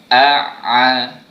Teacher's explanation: untuk huruf ain ni ada bunyi lemak-lemak sikit, yang mana keluarnya daripada tengah kerongkong kita